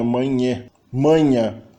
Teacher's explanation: Manha não tem contato, é só uma aproximante. Inclusive, existe a nasalização por contaminação.